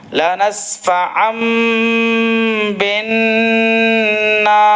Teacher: یہاں ہم اقلاب کر رہے ہیں کیونکہ یہ تنوین دو زبر کے بعد میں با آیا ہے تو یہاں میم سے بدل کر پڑھ رہے ہیں. اور یہاں نون میں گنہ کر رہے ہیں کہ نون اور میم پہ تشدید ہو تو گنہ ہوتا ہے.